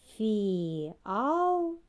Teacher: скільки складів порахуємо три який склад наголошений правильно другий